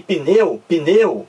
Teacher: Não existe o I aqui entre o P e o N. Na fonia não existe, é só impressão nossa, como também não existe o E, pneu, o pneu. · Você pronuncia aqui pneu, pneu. Você não pronuncia o I, não.